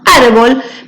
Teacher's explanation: le tengo que poner tilde porque cuando yo la pronunció árbol me suena con mayor énfasis la sílaba ar que sería la penúltima por eso le pongo la tilde y como la regla me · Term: palabra grave